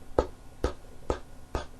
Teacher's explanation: Are your vocal cords vibrating when you're saying the sound P, p, p, p? You feeling any vibrations in your throat? No, your vocal cords are not producing a sound.